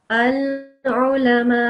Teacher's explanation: I don't know if you heard the slight sound of the hamza sukoon that I made, because this fatha, so you can disregard this alif in the end.